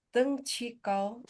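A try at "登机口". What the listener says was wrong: Bukan kau, kou.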